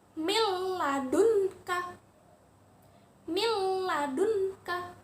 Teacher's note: Huruf nun sukunnya jadi lebur, masuk ke huruf lam, tetapi tidak berdengung. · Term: idgham bila gunnah